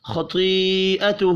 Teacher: خطیئتہ، خا اور تو پر پڑے جائیں گے. یا کے اوپر بڑی مد ہے، 5 الف کے برابر کھینچ کر پڑھنا ہے. ہا الٹا پیش کی وجہ سے 1 الف کے برابر کھینچ کر پڑھیں گے.